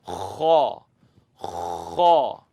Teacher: scratch the back of your throat and say kha, kha, scratch.